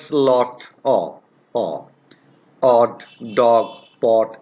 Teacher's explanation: this is a short vowel you can easily guess it's a short vowel it is produced in the back part of the vocal tract